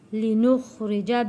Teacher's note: یہاں پہ را کو موٹا نہیں پڑھیں گے کیونکہ را کے نیچے زیر ہے۔